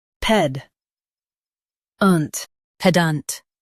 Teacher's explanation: Emphasize the ped and keep ant light.